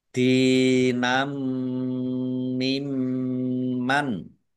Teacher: Fathah tanwin bertemu dengan huruf mim, idgham bi gunnah masuk dengan mendengung mim ditahan kira-kira 2 harokat agar tampak dengungannya.